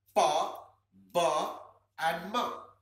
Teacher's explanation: Ma sounds slightly nasal, but pa and ba pure bilabial sounds. · The sound is produced with the help of two lips, where lower lip is the active articulator and upper lip is the passive articulator.